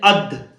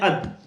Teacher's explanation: زبان کی نوک اور اوپر کے سامنے کے دو دانتوں کی جڑ سے ادا ہوتا ہے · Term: دال